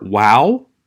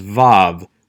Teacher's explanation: letter down in the left-hand column this is the letter wow scholars continue to debate which is correct a w sound or a v sound some claim that the v sound comes from the influence of